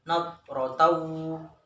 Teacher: Kemudian nadratu, taunya dibaca idgham bi gunnah, yaitu memasukkan tanwin ke dalam huruf wawu dan disertai dengan dengung